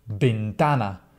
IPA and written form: bentˈana (ventana)